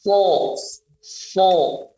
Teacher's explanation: Tekanan tebalnya sangat tebal karena dia huruf idbaq menghujam ke atas.